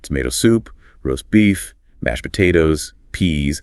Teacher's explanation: When orders, the stress falls on the food items.